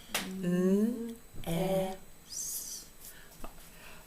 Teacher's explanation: an unvoiced thin stream S